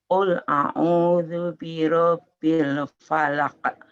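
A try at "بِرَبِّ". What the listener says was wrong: Tasdidnya Bu ditambah benar. Rabbi.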